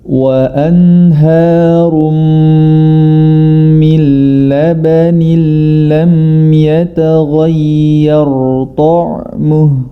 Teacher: huruf ya-nya jangan sampai dia ikut menjadi tebal. Terlebih huruf ya yang mana dia memiliki sifat istifal ini diapit oleh dua huruf yang tebal, yakni huruf ghain dan huruf ro.